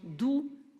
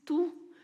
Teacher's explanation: Les groupes de sons D, c'est la consonne sonore, et le groupe de sons T, la consonne sourde.